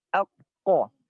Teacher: Huruf qaf ada di paling pangkal lidah, ya, paling pangkal lidah. Yang mana dia pangkal lidah nempel ke langit-langit yang lunak